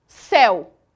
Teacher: O ditongo aberto acontece quando a vogal E ela adquire o som de E e quando a vogal O adquire o som de O, como é o caso do monossílabo céu. Percebam que a palavra céu, a pronúncia dela é imensamente aberta. O E ele possui o som de E.